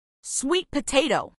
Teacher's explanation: acentuación en la tercer sílaba